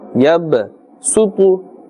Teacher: Ba has a Sakin or a Jazm, and therefore that slight echoing or bouncing sound must be made. Yab, not too much. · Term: Qalqala letters